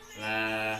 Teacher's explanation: Minhum la, bacaan idhar safawi sebab mim sukun bertemu dengan lam. La, bacaan matobi sebab fathah diikuti alif, panjangnya satu alif atau dua harokat